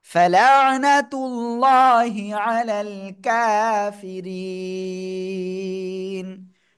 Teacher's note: সাকিন দিয়ে পড়ব। এক আলিফ মাদ এর পরের অক্ষরে ওয়াকফের কারণে সাকিন হচ্ছে, তাই তিন আলিফ টেনে পড়ব।